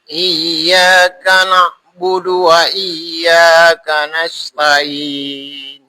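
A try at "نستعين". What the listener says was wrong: Ainnya kurang. Nasta'in. Sa. S. Jangan sya ya. S. Sa. Lidahnya dekatkan ke gigi lagi. S. Sa. Nasta'in.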